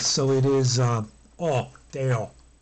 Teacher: in Latin there really isn't a dark O like we have.